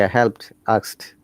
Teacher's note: in both of these cases the d sounds like t